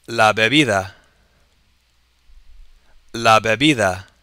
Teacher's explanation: the D at the end sounds more like a TH as opposed to a hard D like we do in English